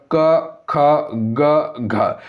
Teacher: अगला है घ का उच्चारण स्थान कौन सा स्थान में आता है, यानी कि घ जो बोलते हैं तो ये क यानी कि कंठीय ध्वनि हो जाएगा, क ख ख, ग, घ, ये सभी कंठीय ध्वनि के अंतर्गत आएगा